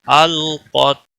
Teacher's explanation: تا پہ کلکلہ نہیں ہونا چاہیے، قاف کو موٹا پڑھنا ہے